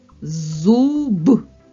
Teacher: перший звук з так твердий приголосний наступний звук у голосний третій звук зуб твердий приголосний